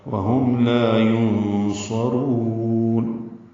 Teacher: نون ساکن پہ اخفا ہے، نون ساکن کے بعد صاد آنے کی وجہ سے اخفا ہوگا · را کو لمبا کریں گے، وقفا مد عارض السکون ہے